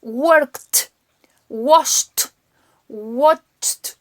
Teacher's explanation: En F o en P, en esos casos la ed se pronuncia como si fuese una T, bien fuerte, bien marcada.